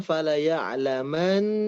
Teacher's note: di nunnya tadi kurang ditahan Bu. Tahan lebih lama.